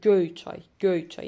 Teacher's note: Göy çay sözündə vurğu göy sözünə düşür, göy hissəsinə düşür.